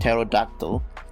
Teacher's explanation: from the greek where the p is actually pronounced but however english does not allow the ps pt and pn sound therefore the p sound is silent